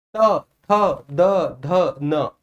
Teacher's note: त थ द ध न तो सर जिभ्या दांतों को छू रही है दांतों के पीछे वाले हिस्से को। त थ द ध न। तो यानी यह जो वर्ण है सर यह दंत के द्वारा उच्चारित होते हैं। · तो सर जिह्वा दांतों को छू रही है, दांतों के पीछे वाले हिस्से को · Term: ता वर्ग